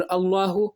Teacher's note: तो ये लफ्ज़ अल्लाह इसमें है, लफ्ज़ अल्लाह से पहले ज़बर आ गया या पेश आ जाए पुर होगा, यानी मुंह गोल करके पढ़ेंगे, आवाज़ निकाल के पढ़ेंगे।